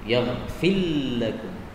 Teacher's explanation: ra-nya hilang menjadi lam dalam bacaan Quran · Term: idgham